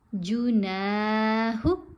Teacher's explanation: تاب، جاہد، حسب، جناح، نون کے ساتھ الف ہے، حرف مدہ ہے، نون کو کھینچیں گے۔ جیم اور ہا کی آوازیں چھوٹی آوازیں ہیں۔